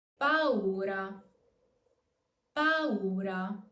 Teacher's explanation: Remember to pronounce the two vowels separately, and the U is pronounced normally, not as a W, but as a full U. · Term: hiatus